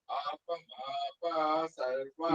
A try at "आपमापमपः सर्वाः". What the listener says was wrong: ಸರ್ವ ಅಷ್ಟೇ ಶುರು ಹೋಯ್ತು. ವಿಸರ್ಗ ಬರ್ಬೇಕು. ಆಹ ವಿಸರ್ಗ ಆ ಕಡೆದು ಆಹ ಆ ವಿಸರ್ಗ ಅದು ವಿಸರ್ಗ ಬಿಟ್ಟು ಬಿಟ್ರು ಹೋಯ್ತು. ಅರ್ಥ ವ್ಯತ್ಯಾಸ ಆಗುತ್ತೆ ಸಂಸ್ಕೃತದಲ್ಲಿ.